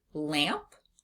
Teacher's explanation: We hear that nasalized a sound in lots of words including the word lamp or the word plant.